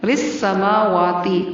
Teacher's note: را اور سین کو باریک، میم اور واو کو تھوڑا سا لمبا کر کے پڑھنا ہے